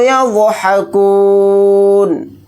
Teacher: ضاد کو یہاں پر موٹا یعنی پر پڑھیں گے اور نون کو ساکن بنا کر پڑھیں گے حالت وقف میں.